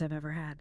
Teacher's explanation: I've ever flows together with a V sound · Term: consonant linking